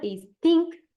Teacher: It is dental because it produced with the tongue against the teeth.